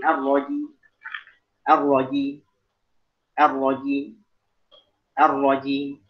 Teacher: Jadi dia hanya membaca sepertiga harokat dari kasrah pada huruf mim. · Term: wakaf dengan raum